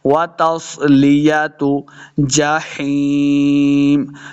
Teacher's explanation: स्वाद हुरूफ़े मुस्तालिया से इसको मोटा पढ़ना है।